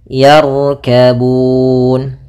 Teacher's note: di sini ada huruf ra tebal. Maka ra-nya kita tebalkan, bukan yarkabun, tapi dia tebal ra-nya, yarkabun.